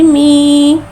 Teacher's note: या साकिन से पहले ज़ेर आ रहा है, या मद्दा हो रहा है, लिहाजा या मद्दा को एक अलिफ यानी 2 हरकत के बराबर खींच के पढ़ेंगे। मीम या ज़ेर मी, मा मू मी, मा मू मी, मा मू मी।